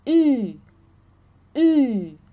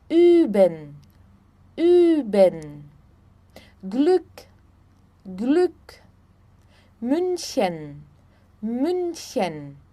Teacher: o U tremado, que tem um som entre o U e o I